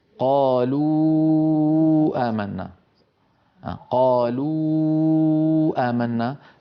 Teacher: فإن الشفتان تنضمان وأقصى اللسان يرتفع عند نطق الواو، والوتران الصوتيان في الحنجرة يهتزان ويرتجفان